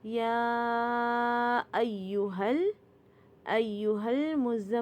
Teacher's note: یہ جو زا ہے نا اس کے اندر بز کا ساؤنڈ آتا ہے۔ یہ جو زا ہے نا اوپر نیچے کے دونوں دانتوں کو زور سے بند کریں گے تو تب یہ زا کا مخرج ادا ہوتا ہے، اور میم مشدد کے اوپر ہر دفعہ غنہ ہوتا ہے۔ · یا کے اوپر کھڑا زبر ہے تو یہ کھڑا زبر 2 کاؤنٹ کا ہوتا ہے اور اس کے اوپر 2 کاؤنٹ کی مد ہے، تو یعنی کہ یہ 4 کاؤنٹ لمبا کریں گے۔